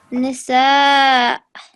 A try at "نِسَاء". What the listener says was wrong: And this one needs to be 4 to 6 seconds long. And this one, this double, this tanween, what is it called? This fatha tanween, this double stroke for fatha, if you pause after this one, it turns into an elongated version.